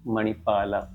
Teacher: the nasal Na sound is formed when we curl the tongue backwards and touch the roof of the mouth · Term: Retroflex Na